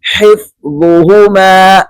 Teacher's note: ہا کو گلے سے نکالنا ہے وسط حلق سے، اور دوسرا وا کو موٹا کر کے پڑھنا ہے، اور اس پہ بالکل سیٹی نہیں دینی۔